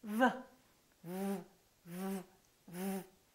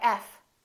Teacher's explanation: V is a voice sound and F is voiceless other than that the V and the f are exactly the same look at my lips V FV F the position of the